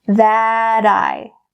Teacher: that T in that is in between two vowel sounds, so it changes to a D sound